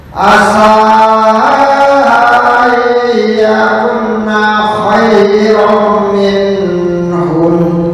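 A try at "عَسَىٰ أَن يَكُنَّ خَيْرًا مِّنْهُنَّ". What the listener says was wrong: Nah, ada nun yang bertasdid, ini ditahan 2 ketukan, 2 sampai 3 ketukan. Asa ayyakunna khairam minhun. Jangan buru-buru. Khairam. Dengungnya ya perlu ditambah. Asa ayyakunna khairam minhun.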